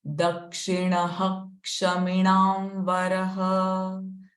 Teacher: So here dakshina, the visarga sound is followed by ksha. So the visarga sound is h. Dakshina kshaminam varaha.